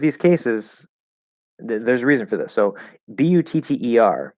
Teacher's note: butter in American English, it's spelled with two T's, but it's just a flap D. Okay, it becomes a flap D because we have all the parameters there to create the flap D.